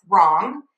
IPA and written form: θrɔŋ (throng)